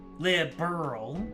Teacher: No vowel sound between the R and L. Liberal. And stress on the second syllable.